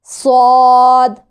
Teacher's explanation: हरफ सौद, ज़ुबान की नोक और ऊपर नीचे के दोनों दांत